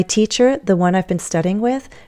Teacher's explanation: I'm rising. And then I go with falling intonation to give my main message.